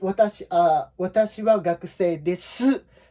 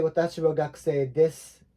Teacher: normally at the end of the sentence in Japanese, the last word, it often happens that last word tends to disappear or seem to evaporate to many non-Japanese speakers ears. But Japanese people think we think we are pronouncing it.